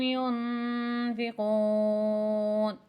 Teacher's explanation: ینفقون یہاں اخفا ہوگا یعنی کہ غنہ ہوگا، آواز ناک میں جائے گی